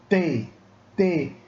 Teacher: Minha língua que vai lá para frente, bate no dente superior, bate no palato, no céu da boca, e sai o som T.